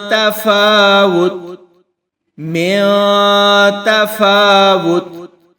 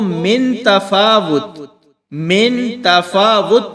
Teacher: اس میں ہم ایسے کرتے ہیں کہ جہاں اخفا ہونا ہوتا ہے وہاں ان حروف پر ہم رکتے ہیں یعنی غنہ کرتے ہیں۔ اس غنہ کو غنہ خفیف بھی کہہ سکتے ہیں، اور اس میں آدھی آواز منہ کے اندر سے آئے گی اور آدھی ناک سے آئے گی۔ اس طرح اخفا مکمل ہوگا۔